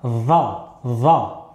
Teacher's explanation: je vais placer le bout de la langue sur le bout des incisives supérieures pour avoir une petite vibration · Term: version emphatique